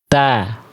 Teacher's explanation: Jadi ujung lidah kita enggak nongol · Dari ujung lidah menyentuh ke pangkal gigi sari atas. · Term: huruf ta